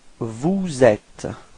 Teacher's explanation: you should do the liaison. So this small link between the S and the E. So you get vous êtes.